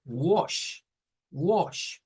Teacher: este es un sonido que es una mezcla entre una A y O. Por eso es que decimos wash, wash, como suena como O, pero no es una O.